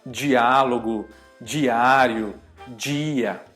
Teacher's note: a gente acaba transformando o D num som de como se fosse um DJ, alguma coisa assim.